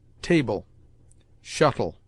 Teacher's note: le at the end of words is pronounced like a weak el, in which the e is almost mute